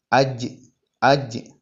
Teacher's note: നാവിന്റെ മധ്യഭാഗം അണ്ണാക്കിലേക്ക് ഉയരുക അതാണ് ജീമിന്റെ മഹ്റജ് അജ് അജ് കാറ്റ് വരാൻ പാടില്ല ശബ്ദം നീളാനും പാടില്ല അജ് അജ് ജി